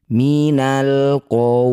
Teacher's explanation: Cara bacanya bunyi waw sukun. Ini panjangkan 6 harokat, baca dengan lembut, berikan huruf vokal U. Jangan lupa huruf terakhir lam sukunkan. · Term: madlin